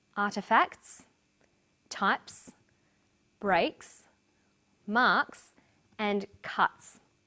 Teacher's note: the second way s is pronounced at the end of a word is s it's pronounced this way after voiceless consonants p t c f